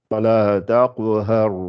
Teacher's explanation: Elle est gonflée le ra puisqu'elle est précédée d'un fatha.